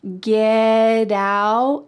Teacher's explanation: So that T is surrounded by vowels, and that means that it's gonna change to a D sound